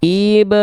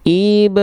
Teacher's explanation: Cuman diayunkan itu adalah tips dan trik agar kita melafalkan hukum tajwid mad tabi'inya kadar 2 harokatnya tepat, tidak kepanjangan, tidak kependekan